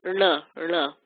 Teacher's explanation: Now, this N has a dot under it, which makes it a retroflex N, which means you're going to do, it's our favorite group of letters, right, or a favorite row of letters, where the tongue goes back in the mouth, curls backwards, and you make your N sound back there